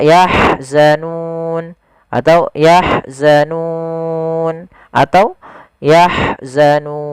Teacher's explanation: Panjangnya berapa? Kita boleh memanjangkan 2 harokat, 4 harokat, ataupun 6 harokat. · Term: mad arid disukun